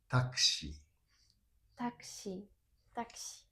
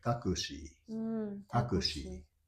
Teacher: in Tokyo, it's pronounced this U is unpronounced